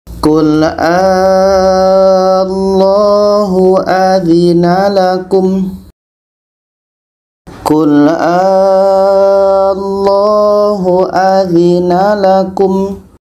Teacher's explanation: Jadi a ini kita panjangkan 6 harakat baru masuk ke huruf yang ada tasydid. Kita baca Qul Allahu adzina lakum. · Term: mad farqi